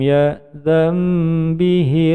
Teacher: Nun sukun bertemu dengan huruf ba menjadi bacaan iklab. Ya dan menjadi ya dan berbunyi huruf mim panjang dua ketukan.